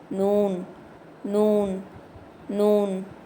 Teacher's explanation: நூன் இந்த எழுத்து நுனி நாக்க மேல் பருக்களோட ஈறுகளுக்கு கொஞ்சம் தள்ளி வச்சு ஓதணும்